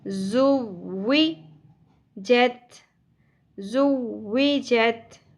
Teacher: ज़ शिद्दत के साथ सीटी के साथ